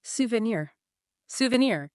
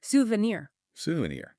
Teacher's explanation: The stress is right at the end.